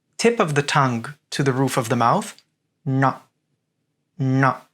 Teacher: The retroflex N, tip of the tongue to the roof of the mouth.